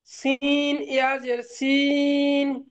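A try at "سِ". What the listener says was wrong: সি, সিন নয়, যে সিন বলবেন না, সি, সিন যে সি পড়েছিলাম, তো সিনজের সি, আর একটু টান দিয়ে পড়বেন, সি।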